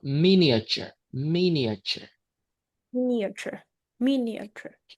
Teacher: we stress on the first syllable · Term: First stress